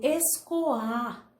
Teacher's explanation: o O fica separado do A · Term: Hiato